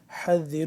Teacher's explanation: حا کو حلق کے درمیان والے حصے سے ادا ہوتا ہے